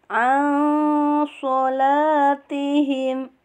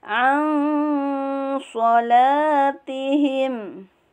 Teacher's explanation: ikhwa yang pertengahan, yang gunah dan samarnya 50-50%